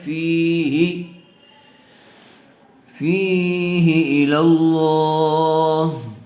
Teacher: واتقوا یوما ترجعون فیہ الی اللہ، فی فا کو کھینچ کر پڑھیں گے تھوڑا سا، اس لیے کہ زیر والے حرف کے بعد یا ساکن آئی ہوئی ہے، یا مدہ ہوگا، اور ہا کے نیچے صرف زیر ہے، اس لیے ہا کو جلدی پڑھیں گے، کھینچیں گے نہیں، فی ہی نہیں پڑھیں گے بلکہ فی ہی، فیہ الی اللہ.